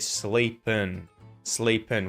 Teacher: we're going to turn the ing into an un sound instead of an ing sound